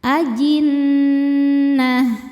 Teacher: Nunnya dihukumi dunah musyaddadah karena nun bertasydid. Cara bacanya berdengung. Bunyi n tahan kurang lebih dua harakat. Ajinnah nanya pendek ya, enggak ada pemanjang. · Cara bacanya berdengung, bunyi n tahan kurang lebih 2 harokat. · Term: gunnah musyaddadah